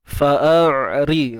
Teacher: Fa'ari, ra baris bawah ri. Nipis saja.